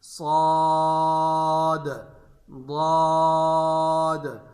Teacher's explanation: صاد اور ضاد کے آخر میں قلقلہ کرانا ہے، صاد، ضاد، اور اس بات کا خیال رکھنا ہے کہ آخر میں واو پیدا نہ ہو۔